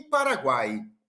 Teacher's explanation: o tritongo que é a semivogal mais a vogal mais uma semivogal nesta ordem